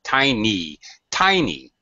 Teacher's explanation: stressed in this word obviously the why has this ye sound it's not a schwa or a short sound that's actually a long sound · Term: long vowel sound